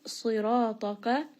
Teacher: Sad is going to be heavy. Ra is going to be heavy. Ta is going to be heavy. Ra here, this is going to be a two count madd.